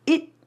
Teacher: the T at the end sometimes becomes a stopped T